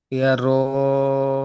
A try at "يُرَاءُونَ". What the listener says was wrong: ইয়া র নয়, ইয়া পেশ কি হয়? ইয়া পেশ ইউ।